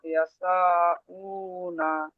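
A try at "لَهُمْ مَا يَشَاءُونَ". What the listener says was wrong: উ না, এখন এই আমরা, আপনি যেহেতু লাস্টের দিকে পড়ছেন সেই সূত্রে এখন এই উ না আর পড়ার দরকার নেই। যখন ওয়াকফু করবেন বলেছি, তখন জবরকে ছেড়ে দেবেন, কি বলবেন? লাহুম মা ইয়াশাউন।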